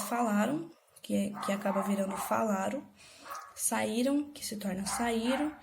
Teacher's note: Depois da síncope, a gente tem a desnasalização das vogais e ditongos nasais postônicos e monotongação desses ditongos